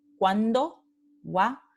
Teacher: De nuevo tenemos un diptongo creciente porque es semivocal más vocal.